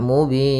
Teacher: panjangnya pada lafal bin itu boleh 2 harokat, boleh 4 harokat, dan boleh pula 6 harokat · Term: mad arid disukun